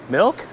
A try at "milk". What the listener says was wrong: M E L K. He's not hearing the difference.